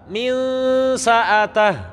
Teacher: Karena dengungan saat saya mendengungkan suara nun mati, lidah saya sudah di makhrajnya sin.